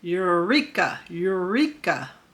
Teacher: But bossy R changes that U to Eureka, Eureka. That R is a lot stronger, and U turns into your.